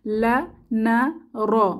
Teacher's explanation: জিহবার আগা আর উপরের তালুর সাথে লেগে লা না র উচ্চারিত হয়।